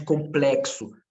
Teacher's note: se eu falo de complexo, o X, ele assume sim o som de KS